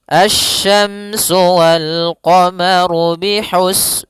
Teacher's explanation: Pada lafal asyamsu di sini ada alif lam syamsiyah yaitu alif lam yang ditulis tapi tidak dibaca sehingga bacaannya langsung ke huruf syin. Nah, kemudian kita juga harus hati-hati dalam pelafalan huruf syin.